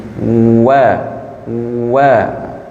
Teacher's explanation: wau makhrajnya kedua bibir seakan bergesekan dengan angin